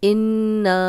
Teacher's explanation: इन्ना, नून पे शद तो गुन्ना, और ना अलिफ मद्दा, खाली अलिफ पीछे ज़बर, तो 2 हरकत लंबा करेंगे